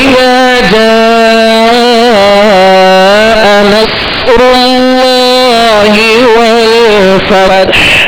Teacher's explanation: صاد پر جزم ہے صاد ساکن ہے لہذا اس کی آواز ہلے گی نہیں. صاد کو پر پڑھنا ہے سیٹی کی آواز میں پڑھنا ہے اور را پر پیش ہے لہذا را کو پر کریں گے.